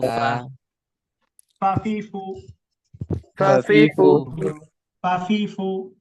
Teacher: সামনের উপরের দাঁত, নিচের ঠোঁটের পেট, বাতাস চালু